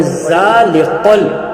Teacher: زبان کی نوک سے یہ ادا ہوگی اور یہ ہلکے حروف میں اس کا شمار ہوتا ہے۔ بہت سارے بچے اس کو پڑھتے ہیں زا غلط ہے، اس کو ہم پڑھیں ذالقل۔